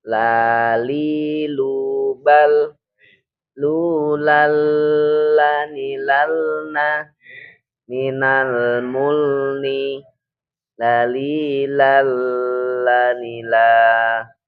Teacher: Sisi depan lidah menyentuh gusi atas. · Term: Huruf lam